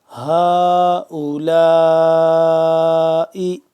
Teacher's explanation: اس کے بعد کیونکہ حمزہ آ گیا تو اس مد کو ہم کریں گے 4 الف کے برابر لمبا۔ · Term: مد متصل